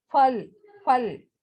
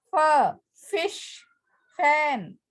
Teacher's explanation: When we pronounce Hindi fur, we use both the lips. But when we pronounce English fur, we use upper teeth and lower lip.